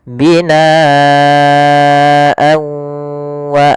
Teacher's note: huruf setelahnya kalau di sini huruf setelahnya adalah huruf wau maka tanwinnya kita masukkan kepada huruf wau kemudian ditahan gunahnya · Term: Idam bunah